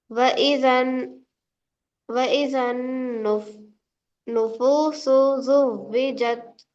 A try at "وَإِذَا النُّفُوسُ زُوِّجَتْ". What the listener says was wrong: सिन की जगह नहीं यहाँ पे।